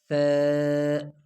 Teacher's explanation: یعنی سا کو زبان تھوڑا نکال کے دانتوں کے درمیان اور پھر ادا کریں گے ثا